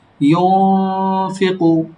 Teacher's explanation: ফা দুই ঠোঁট থেকে, ইউনফিকু ফা, ফা যেভাবে উচ্চারণ হয় ইউনফিকু গুণাটাও এভাবেই হবে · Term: ইকফা গুন্না